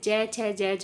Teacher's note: स्पर्श व्यंजन का तात्पर्य है कि जब इन व्यंजनों के उच्चारण में जो उच्चारण स्थल है परस्पर एक दूसरे का स्पर्श करते हैं, या ऐसे कह सकते हैं इन व्यंजनों के उच्चारण में हमारी जीभ अन्य उच्चारण स्थलों को स्पर्श करती है। जैसे च, छ, ज, झ में जीभ है जो तालु को स्पर्श करती है।